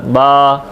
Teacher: होंठों के तर हिस्से से, अंदरूनी हिस्से से, नरमी के साथ बा